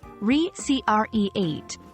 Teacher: recreate, with stress on the second syllable